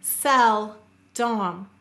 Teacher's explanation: I'll stress both syllables equally